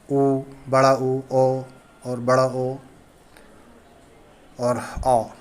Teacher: व्रतमुखी स्वरों का उच्चारण करते समय होठ गोलाकार हो जाते हैं।